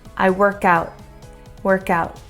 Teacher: I'm gonna do a stop T and stop it in my throat.